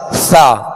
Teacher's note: ثا کو ہم پڑھتے ہیں نرمی کے ساتھ، ثا، اس کو سیٹی کی آواز میں نہیں پڑھتے، تو اس کو نرمی کے ساتھ پڑھنا، نرم پڑھنا، یہ اس کی خوبی ہے۔